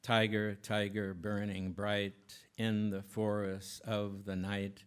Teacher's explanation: most people will read it aloud, with really heavy accents and what would seem to be a trochaic meter, at least for the first three lines.